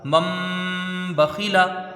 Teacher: نون ساکن کے بعد با ہے، یہاں اقلاب ہوگا، نون کو میم سے بدل کر غنہ کے ساتھ پڑھا جائے گا